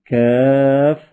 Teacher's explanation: زبان کی جڑ اور تالو کے سخت حصے سے ادا ہوتا ہے۔